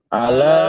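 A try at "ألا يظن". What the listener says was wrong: জুনু টান হবে না জুন্নু জুন্নু জুন্নু জুন্নু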